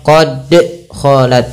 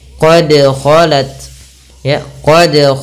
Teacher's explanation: huruf Dal memiliki Salah satu sifat yang dinamakan dengan qqalah yaitu memantul ya atau getaran dia harus ada bergetar dan memantulnya